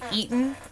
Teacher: we've got that glottal stop that's not always used